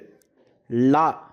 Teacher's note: நாவின் இரு பக்கங்கள் தடித்து மேல் அன்னத்தின் நடுப்பகுதியை தொடுவதால் லகரம் தோன்றும் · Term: பொது லகரம்